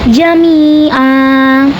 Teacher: Ketika berhenti di sini hukumnya adalah mad ii wau. Sebab ada harakat tanwin fathah yang kita berhentikan atau kita wakafkan. Dan cara bacanya panjangnya itu dua harakat